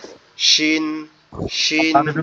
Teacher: শিনটা হচ্ছে আমাদের জিহ্বার মধ্যকান উপরের তালুর সঙ্গে লাগবে, অর্থাৎ জিভের যে মাঝ অংশটা, জিহ্বার যে মাঝ অংশ, এটা উপরের তালুর সঙ্গে লাগবে, লেগে উচ্চারিত হবে শিন শিন।